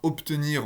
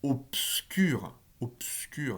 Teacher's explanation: c'est un B orthographique, mais c'est pas du tout prononcé B, c'est bien un P